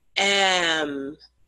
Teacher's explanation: before we get to the M sound when we're pronouncing the letter, we make a vowel sound first.